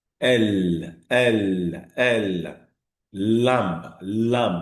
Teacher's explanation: The air escapes from both sides of the tongue when you pronounce that particular phoneme. · air comes out from both sides of the tongue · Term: latéral